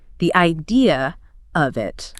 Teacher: A non-rodic speaker might say something like the idea of it. But because idea ends in a vowel and of starts with one, they might naturally insert an R sound to link them smoothly. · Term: intrusive R